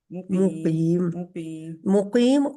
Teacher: مقیم قا موٹا بھی رہے گا جی اور لمبا بھی ہوگا